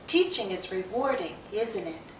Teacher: There's a connection between the use of a tag question and its pronunciation. When we're simply commenting, the pattern often is to have falling intonation. Our voice goes down.